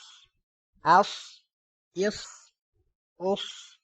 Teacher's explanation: اب صاد ہے، اس کو موٹا بھی پڑھیں گے، حمزہ صاد زبر اس، حمزہ صاد زیر اس، حمزہ صاد پیش اس، اس، اس، اس۔